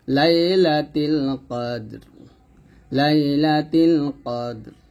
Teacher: দাল কলকল করতে হবে র টাকে সাকিন ধরতে হবে এবং র মোটা করতে হবে